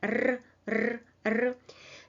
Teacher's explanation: You touch the alveolar zone and produce a mild vibration.